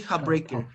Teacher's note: notice we're changing the sound ta to the sound pa. So now you say heartbreaker, hop, hop, hop.